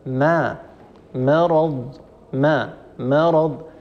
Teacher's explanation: فيخشى على الميم التي قبل أن تفخم تبعا للراء ، مثلا ما مرض ما ما، هذه ميم مفخمة والعرب لا · الميم مفخمة ولا يصح أن نفخم الميم، الميم هي مستفلة وهي مرققة دائما ولا تفخمها العرب أبدا